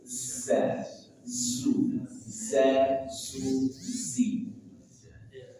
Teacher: Ingat, za punya sifat sofil. Desis.